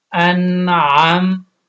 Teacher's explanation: حمزہ نون زبر ان، اب یہاں پہ دیکھ لیں کہ نون ساکن ہے لیکن آگے حروف علقی میں سے عین آ گیا، تو یہاں پہ آپ نے غنہ نہیں کرنا